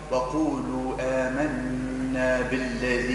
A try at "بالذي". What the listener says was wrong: مش بل بالذي بي بين الكسر.